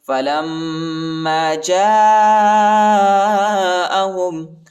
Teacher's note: لام کو میم کے ساتھ ملائیں گے اور غنہ بھی کریں گے